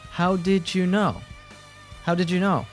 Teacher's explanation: A d plus u often morphs into ju.